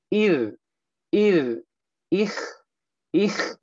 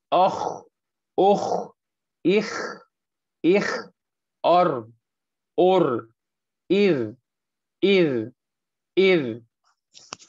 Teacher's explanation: خا اور را کو جب ہم کسرہ کے ساتھ پڑھیں گے کہ ان سے پہلے کسرہ ہوگا تو ہم اسے تھوڑا سا باریک کر کے پڑھیں گے